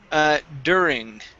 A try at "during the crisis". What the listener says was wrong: Right here, instead of during, it's during. Give me a good R.